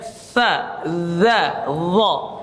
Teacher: Makhrajnya harus melet ya. Sa, zal sama dha, yaitu ujung lidahnya dan ujung gigi seri atas harus sedikit melet ya.